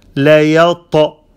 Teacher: Ta is heavy with qalqala.